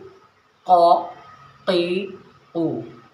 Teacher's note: क़ाफ़ जो है मोटा भी पढ़ा जा रहा है